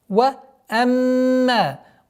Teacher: удержание назализации в размере двух огласовок, после которой долгота в размере двух огласовок фатха.